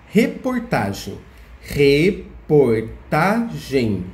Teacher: caso essa paroxítona não recebe acento porque que ela é paroxítona porque a sílaba tá é a sílaba que a gente fala mais forte em reportagem · Reportagem tem 4 sílabas. A sílaba mais forte é o tá